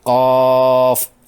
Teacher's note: اس الف مدہ کے بعد فا ساکن ہے، حرف مدہ کے بعد سکون مد لازم کا باعث ہوتا ہے۔ 6 حرکات کھینچتے ہوئے یوں پڑھیں گے، قاف۔